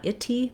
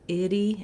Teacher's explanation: We don't use a strong aspirated T, not itty, but itty in American English. So it sounds more like how we say the D sound in the middle of words. It's called a flap.